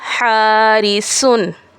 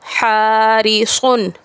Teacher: سین کی آواز باریک اور سیٹی والی، جبکہ صاد کی آواز موٹی اور سیٹی والی ہوتی ہے